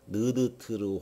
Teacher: 혀 끝이 입천장을 닿으면서 나는 소리고요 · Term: 설